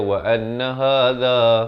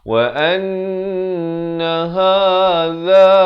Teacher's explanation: ha pangkal kerongkong za di hujung lidah